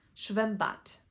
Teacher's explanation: The letter d at the end of a word becomes a t.